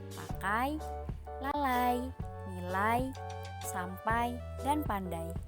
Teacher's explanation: vokal yang kedua diucapkan dengan posisi lidah lebih tinggi dari yang pertama posisi leader semakin menaik sehingga berikutnya semakin tertutup berdasarkan posisi diatas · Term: diftong naik